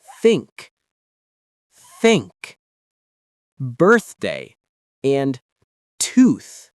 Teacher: For these words, there's no vibration at all. It's just air passing through.